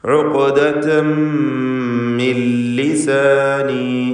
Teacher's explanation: ഇവിടെ ഇദ്ഗാം ബിഗൈരി ഗുന്ന നൽകി പൂർണ്ണമായും ലാമിലേക്ക് നൂനിനെ ലയിപ്പിക്കണം. ലാമിൻ്റെ ഉച്ചാരണം ഉണ്ടാവുകയില്ല. · തൻവീനിനെ പൂർണ്ണമായും ശേഷമുള്ള മീമിൽ ലയിപ്പിച്ച് ഇദ്ഗാം ബിഗുന്ന കാമിൽ നൽകി മണിക്കുക